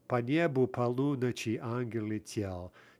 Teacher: You can hear that between each stressed syllable, there are basically two unstressed syllables. And that's kind of the dead giveaway that we're dealing with a ternary meter.